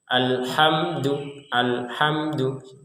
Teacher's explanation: Jadi, alhamdu harus jelas, tidak ada pantulan dari huruf mimnya. Enggak ada sama sekali.